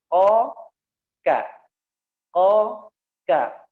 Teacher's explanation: K, di mana pangkal lidahnya disentuhkan ke tulang daripada langit-langit atas. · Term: huruf K